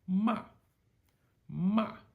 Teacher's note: high to low sharp falling tone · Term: fourth tone